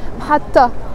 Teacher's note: It has a T مربوطة in the end. It's a T that we don't pronounce